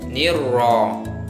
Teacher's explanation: Hukum tajwidnya alif lam syamsiah karena huruf alif lam bertemu huruf syamsiah ro, dibaca idgham masuk ke ro